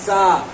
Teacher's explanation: زا کو خوب سیٹی کے ساتھ پڑھیں گے